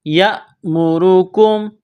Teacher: حمزہ جب ساکن ہوتی ہے تو حمزہ پر کچھ جھٹکا سا دیا جاتا ہے